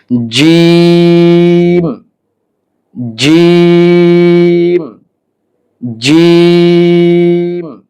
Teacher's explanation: জিহ্বার মাঝখানটা আপনাকে তালুর সাথে লাগাতে হবে, তাহলে জিম উচ্চারণ হবে।